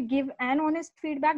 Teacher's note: It should be give an honest feedback because the H is silent. So the O comes as the first, the vowel there.